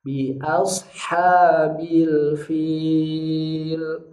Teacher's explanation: A tipis, shad yang tebal. Lalu H-nya tipis lagi. Bi'asha. Jangan bi'asha.